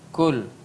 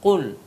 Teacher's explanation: kalau ka ada napasnya ada keluar, tapi kalau ko dia sedikit kayak menggigit di dalam pangkal lidahnya itu